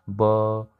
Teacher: आप लोग ब को बोलो तो आप लोग के गले में एक वाइब्रेशन होगा, आप लोग हाथ रख के गले पे ये फील कर सकते हो, आप लोग ट्राई कर सकते हो ब।